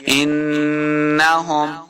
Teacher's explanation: کو نون مشدد کے ساتھ ملا کے پڑھنا ہے، ان، اور نون مشدد پہ ہم نے ہمیشہ غنہ کرنا ہوتا ہے